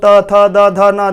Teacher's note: ता वाला जो हमारा हो जाएगा दंतो, त थ द ध न, दांत में हमारी जीभ सटती है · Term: दंत वर्ग